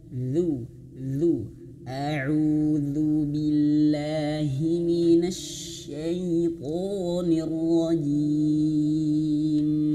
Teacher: Bukan zu tapi a'udzu. Nah, lidahnya dikeluarkan sedikit dan sentuh ujung gigi seri atas. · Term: huruf dzal